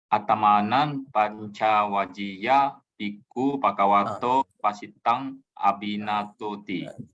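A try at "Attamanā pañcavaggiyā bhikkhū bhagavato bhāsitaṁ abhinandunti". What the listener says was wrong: This part is not J. This is not J. This is G. Attamana pancha, not Vajya. Pancha Vaggiya. Vaggiya. Abhinandunti.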